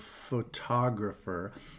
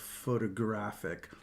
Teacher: puts the stress on the first syllable of photograph on the second syllable of photographer on the third syllable of photographic